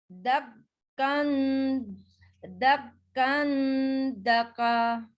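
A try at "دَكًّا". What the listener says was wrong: Kafnya double. 2 kaf itu double.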